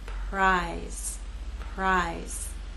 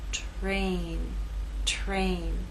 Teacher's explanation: And in this last word, T is voiceless. R begins voiceless and takes on a voiced sound as we move into A.